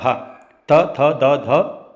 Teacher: त थ द का उच्चारण स्थान दंत होता है